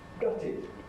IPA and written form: ˈgʌtɪd (gutted)